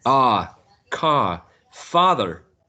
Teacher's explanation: The one in the middle, hut, I guess it's easier. And then we have a long ah, which is not present in Spanish at all.